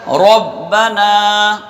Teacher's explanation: ربنا میں را کو ہم موٹا رکھیں گے، با پر تشدید ہے، 2 مرتبہ پڑھا جائے گا۔